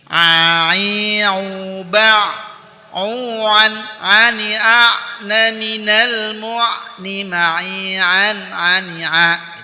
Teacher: Tawasud itu bainiyah antara syiddah dan ar-rakhawah. Jadi suara Ain ketika berharokat sukun dia itu dialirkan sedikit